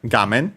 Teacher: Should be accent on the first syllable, and it is, despite being a Chinese compound.